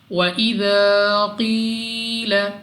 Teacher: الف مدہ کو 2 سیکنڈ تک کھینچ کر پڑھا جاتا ہے۔ قاف مستعلیہ میں سے ہے، موٹا پڑھیں گے منہ اور آواز کو کھول کر۔ یا ساکن سے پہلے زیر یا مدہ، اس کو بھی 2 سیکنڈ تک لمبا کر کے پڑھیں گے۔